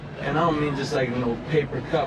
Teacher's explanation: The way you could say this is how he said it, but pronouncing the D in don't. Other aspects of connected speech present in this sentence is the drop of the D in and the T in don't.